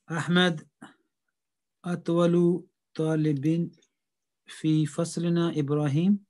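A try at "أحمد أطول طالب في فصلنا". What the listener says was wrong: You read it like it's a question. Can you read it again?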